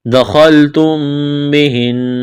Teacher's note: خا کو موٹا کرنا ہے، میم کے بعد با ہے، یہاں پر غنہ کریں گے، آواز ناک میں چھپائیں گے، نون مشدد ہے، آواز ناک میں چھپائیں گے۔